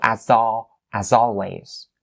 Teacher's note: the S here, it has to be the Z sound. It's not the S sound